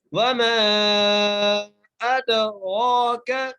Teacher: حمزہ کو دال سے ملانا ہے، دال پر قلقلہ کرنا ہے، را کو موٹا کر کے پڑھنا ہے، اور را کے اوپر کھڑی زبر ہے، ایک الف کی مقدار کھینچ کر بھی پڑھنا ہے